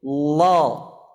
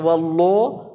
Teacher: ucapkan lam tersebut ya dengan tebal dengan cara mengangkat pangkal lidahnya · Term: lam tebal